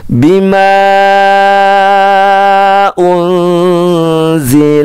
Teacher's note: hati-hati di ma panjang ya